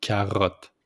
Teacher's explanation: Just put the accent on the R with the throat.